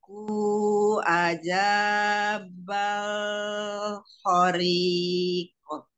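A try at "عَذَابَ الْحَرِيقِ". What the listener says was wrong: Umi, ini zal lagi. Aza, nongol lagi. Azabal hariqo. Ha, ha, har. Hariqo.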